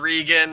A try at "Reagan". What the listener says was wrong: Oh, Reagan. You said Regan. You said Regan.